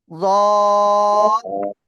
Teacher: জিহ্বার গোড়ার কিনারা উপরে মাড়ির দাঁতের গোড়ার সাথে লাগিয়ে আপনি এই অক্ষরটা উচ্চারণ করবেন